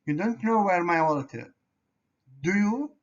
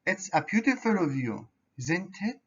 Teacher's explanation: with rising intonation it sounds like a real question but if our intonation falls it sounds more like a statement